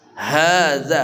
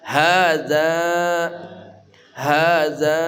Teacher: hadza ha dari pangkal kerongkongan kita